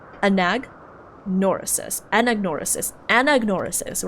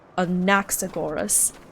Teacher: But here you can't put stress in the na. You have to put stress on the a at the very beginning.